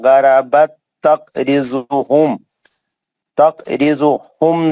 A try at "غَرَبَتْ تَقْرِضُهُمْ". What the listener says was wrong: تقرضهم نہیں پہلے خلخلہ کرو.